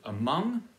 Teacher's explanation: with the stress on the second syllable among or is it among and it's certainly not among because